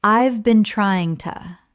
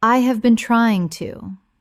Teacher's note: the h in have often disappears and the words run together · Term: connected speech